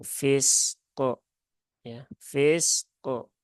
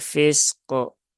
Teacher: Nah, bukan fiske ya, tapi fisko ya. Jadi pantulan kof itu bukan ke, tetapi ko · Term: qalqalah